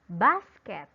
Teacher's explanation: The syllable bus is pronounced longer and louder than the other syllable. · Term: stress